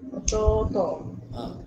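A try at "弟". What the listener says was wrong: Ototo. Ya, tok tu je bunyi panjang sikit. 1.5 harkat. Ada harkat lah eh. Bukan ototo dah macam bunyi lembu eh.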